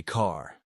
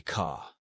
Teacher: in classic New York speech, the R disappears unless it's at the beginning of a word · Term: the dropped R